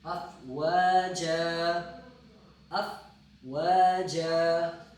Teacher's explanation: اگر جن پڑھیں گے تو پھر غنہ پڑھنا ہے، اگر غنہ نہیں آپ اس پہ وقف کرتے ہیں تو افواجا پڑھیں گے، یعنی نون ساکن تنوین ساقط ہو جائے گی